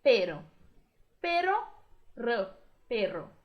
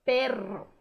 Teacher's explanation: Um R só, vibrou o R um pouquinho.